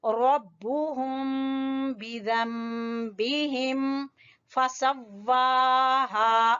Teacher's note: वाव को हम खींच रहे हैं खड़ी जबर की वजह से और हा को खींच रहे हैं अलिफ मद्दा की वजह से